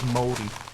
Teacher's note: It's sort of got a soft R sound in it. Like the R is like a rolled R, so it becomes moldy.